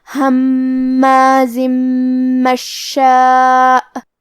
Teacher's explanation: کلمت مشاء میں شین پہ تشدید ہے، تو ہم تشدید کو ظاہر کریں گے اور 2 حرف کے برابر شین کو پڑھیں گے. الف پہ مد کا علامہ ہے، یہ مد واجب متصل ہے، اور مد واجب متصل کا معنی ہے کہ حرف المد اور اس کی وجہ جو کہ حمزہ ہے دونوں ایک ہی کلمہ میں ہو. · کلمت ہماز میں میم پہ تشدید ہے، تو ہم یہ حرف کو 2 حرف کے برابر پڑھیں گے. آخری میں زے ہے اور اس کے نیچے تنوین زیر ہے، پھر حرف المیم آتا ہے.